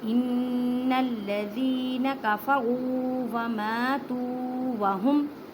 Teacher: زال کو نرمی سے ادا کریں، زال کو ایک الف کی مقدار میں کھینچ کے پڑھیں